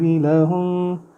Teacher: لہم میم کے اوپر شد ہے، غنہ کریں گے